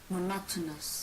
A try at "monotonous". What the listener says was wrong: Yay, good.